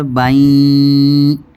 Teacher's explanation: اگر ایک زبر کو جزم والی یا سے ملائیں گے تو جلدی سے پڑھیں گے بئی، اور دو زبر کو یا دو زیر کو یا دو پیش کو تشدید والی یا سے ملائیں گے تو آواز ناک میں چلی جائے گی، غنہ ہوگا، آواز ناک میں جائے گی